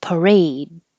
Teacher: you don't have to say the last D